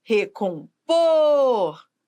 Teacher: por é a sílaba que manda na palavra é a sílaba tônica e não vem com acento nem toda sílaba tônica tem acento por quê porque existem regras